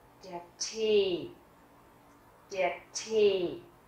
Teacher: Các bạn thấy ở đây âm e, tức là hai nguyên âm lặp lại như vậy thì ta sẽ luôn luôn đọc dài e